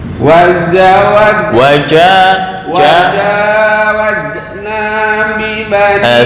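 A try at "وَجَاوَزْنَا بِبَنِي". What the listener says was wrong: Sebentar, za itu jangan kolkolah, bukan wazna. Z itu kolkolah. Nah, ini yang kurang pas. Masih tercampur dengan jim.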